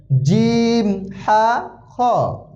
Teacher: হা গলার ভিতর থেকে চাপ দিয়ে উচ্চারণ হবে